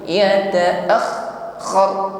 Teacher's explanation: Yata'akhkhar, bunyi huruf kha-nya ini ngalir, jangan diputus. Yata'akhkhar, alirkan saja, rakhawah sifatnya.